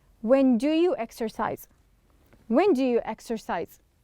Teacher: i didn't pronounce it separately i pronounce do and you as if it's one word